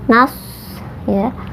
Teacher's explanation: nas ini dibacanya harus ada desisnya seperti suara angsa